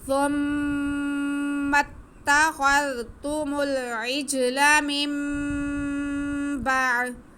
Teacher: ہم نون ساکن کی آواز کو میم میں بدل کر پڑھیں گے، نون نہیں پڑھیں گے اور یہی اقلاب ہے. میم با نون کی آواز کو میم میں بدلیں گے اور غنہ بھی کریں گے